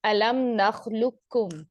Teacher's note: ये पूरे का पूरा काफ में मर्ज हो जाता है, और हमें इस कौफ की आवाज ही नहीं आती, ये ड्रॉप हो जाता है